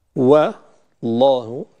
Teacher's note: والله، الواو قبل لفظ الجلالة مرققة، لأن الواو مرقق مستفل مرقق دائما. لفظ الجلالة مفخم، لامه مفخمة، والهاء فيه مرققة أيضا